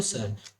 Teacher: जो सर होता है उस स का उपयोग होता है दंत से